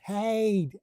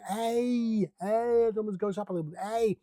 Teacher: So you have to stretch your vocal folds just a little bit to make it happen. In the back of the throat, it feels almost constricted.